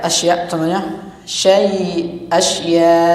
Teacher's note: ada sedikit tekan ya seperti itu contohnya yang hamzah karena makhrajnya adalah pangkal tenggorokan paling dalam